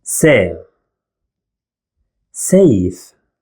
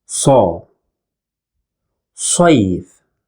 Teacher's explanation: The first one, safe, which means a sword, and as you can see, it contains the soft sound, se. While the second one, saif, means summer, and as you can see, it contains the hard sound, sa.